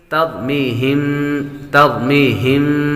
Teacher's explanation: ترمیہم بحجارۃ من سجیل ترمیہم ترمیہم، یا حروف مدہ میں سے ہے اور میم ساکن پر غنہ ہوگا، میم ساکن کے بعد با آ جائے تو غنہ کرتے ہیں